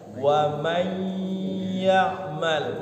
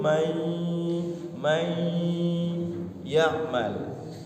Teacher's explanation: May itu dengungnya ke hidung. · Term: idgham bigunnah